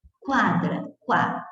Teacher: esse som de U, na mesma sílaba que outra vogal, é semivogal, o que nos dá um ditongo crescente